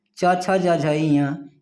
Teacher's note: च वर्ग के जितने वर्ण हैं च छ ज झ ञ, इसका उच्चारण स्थान तालु है